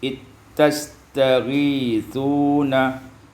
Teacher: idghamul zal fi ta', diidghamkan zal pada ta' menjadi ittastaghithuna